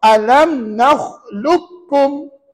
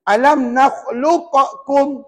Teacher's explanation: Dia kena alam nakhluqukum. Maksudnya huruf qaf ni langsung tak dibaca sebab adanya huruf kaf yang bersabdu